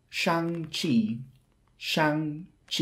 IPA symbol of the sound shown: tʃ